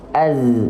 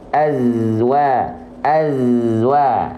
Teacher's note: dalam kondisi sukun maka dilafalkan tidak dengan menggunakan vokal aiu tidak zazizu tapi e aja Kenapa karena dalam kondisi sukun bukan dalam kondisi